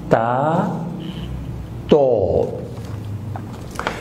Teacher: ہونٹوں کو گول کیجئے، دانتوں کو اوپر رکھ کے تو آواز ہوا کو دھکیلیں گے